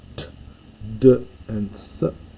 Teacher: So this is the unvoiced, voiced and aspirated dental. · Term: dentals